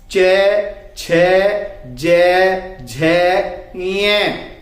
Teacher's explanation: तालु। च, छ, ज, झ, य बोल के देखेंगे, जीभ ऊपर को उठती है। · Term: च वर्ग